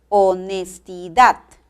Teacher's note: la mayor fuerza de voz recae en la última sílaba